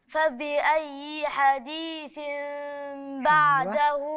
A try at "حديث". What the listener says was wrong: بس ما تفتحش وبعدين تقفل، هي تفتحها تسيب الفرجة دي. حديث حديث.